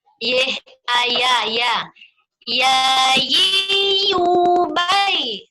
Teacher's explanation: huruf yang keluar dari tengah lidah ke langit-langit ini ada tiga. Yang ketiga adalah huruf iya.